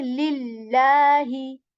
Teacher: So again the law sound is here. But if there is a kasra before this lam, we keep this lam of Allah light.